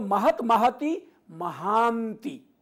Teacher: ह में जो अ है वो दीर्घ रहेगा, ह्रस्व नहीं होगा